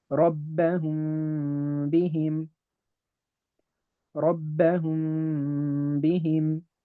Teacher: I will hide the labial component of the meme. I'm not going to press my lips together. · I'm not going to press my lips together. However, I will make the nasal vibration, the nasal sound of the meme. And so it will sound like, instead of ربهم بهم, it would be ربهم بهم ربهم بهم. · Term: labial hiding, ikhfa shafawi